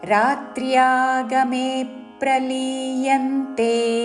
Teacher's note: మే దీర్ఘము దాని మీద ఆఘాత య మీద కూడా ఆఘాత